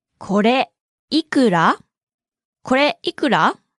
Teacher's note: Note the pause after kore and the rising intonation at the end.